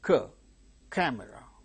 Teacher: it is k sound occurring at the word initial stressed position, it is aspirated